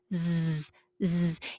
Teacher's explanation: Now, as you can see in this picture, the tip of the tongue is important, and the incisors is important to make the sound. So the sound is produced as the tip of the tongue touches the lower incisors. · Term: zai